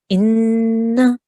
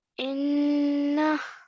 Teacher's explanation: So we just have to hold on that for about 2 seconds, the nasal sound. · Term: noon gunnah